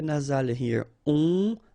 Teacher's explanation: OM, really like a nasal here. On, and then this P is not pronounced.